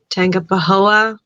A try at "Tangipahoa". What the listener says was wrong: Oh, you almost had it. Instead of the hard G, Tangipahoa.